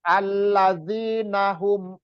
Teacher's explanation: Ikhfa itu dua harokat juga. Jadi ikhfa-nya itu antara nun suara nun itu samar dan persiapan ke huruf sod.